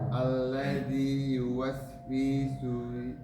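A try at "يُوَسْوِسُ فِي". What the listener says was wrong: wi-nya tidak panjang. Yuwaswisu fi, langsung.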